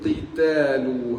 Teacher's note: Qaf baris bawah tebal